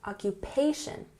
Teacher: We emphasize the third syllable here